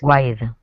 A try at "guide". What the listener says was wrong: We don't pronounce the U in this word. It's just guide. Guide. Okay, and everybody in the class with your microphones muted, just try saying that word, guide, just so you realize that you don't pronounce that U.